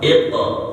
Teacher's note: Kalau kita baca iqra ya, mantulkan qaf tapi tidak ada gesekan hamasnya ya.